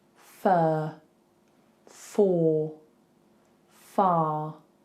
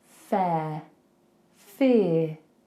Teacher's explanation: notice those first three are straight and the second two have like a little shift